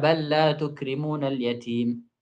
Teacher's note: lam bal itu diidghamkan pada lam dan ra